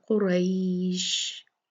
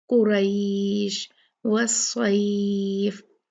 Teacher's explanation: را پہ فتحہ ہے، زبر ہے، اور اس کے بعد یا جو ہے وہ ساکن ہے، تو یہ لین ہو گیا